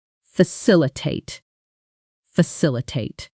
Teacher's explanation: Four syllables. Stress on the second.